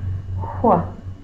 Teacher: It's a W sound with a lot of extra air.